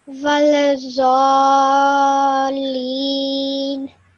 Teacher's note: you join the lam, hold that lam sound in your mouth for a bit longer, and then you say the leen at the end.